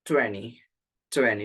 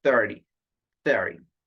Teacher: syllable stress on the first syllable